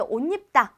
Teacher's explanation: 이거를 조금 띄어서 쉬어서 발음할 때는 야, 너 빨리 와서 옷 입어 라고 하면은 니은 첨가가 일어나지 않아요. 근데 옷 입다 라고 연이어 발음할 때는 이렇게 니은이 첨가가 되어 나타나고 있습니다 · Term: 니은 첨가 현상